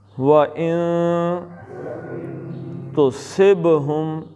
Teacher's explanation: ان کے نون کا اخفاء کرنا ہے، زبان تالو سے نہ لگے، اور تصب کا با قلقلہ ہے، تصب۔